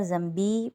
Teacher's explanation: ذنبی بی کے اوپر ایک الف کی مقدار اس کو کھینچیں گے